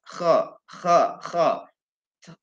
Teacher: antara cara membaca kho itu adalah di tenggorokan bagian atas.